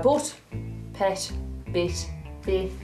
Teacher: we actually make the T more with our tongue rather than closing our teeth together